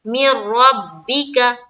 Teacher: نون پورے طور سے را سے بدل گیا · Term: ادغام تام